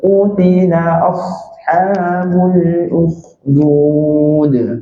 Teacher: pastikan ruang masa huruf sad sedikit lama dia ada mengalir sikit